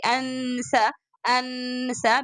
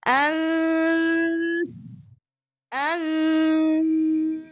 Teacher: The tongue should be exactly on the seen articulation point, and you are focusing your sound to be coming from your mouth and your nose both together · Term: ikhfa sound